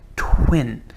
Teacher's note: When you make the sound t for twin, your mouth is in a round shape, as if you were going to say oh.